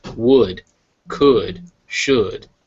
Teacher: this is the weak u sound in English the uh of would could should